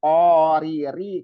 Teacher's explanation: rinya tipis jangan sampai tebal